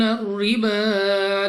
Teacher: را کے نیچے زیر، تو را کو باریک پڑھیں گے. با پر کھڑا زبر 2 سیکنڈ تک لمبا کرنا ہے.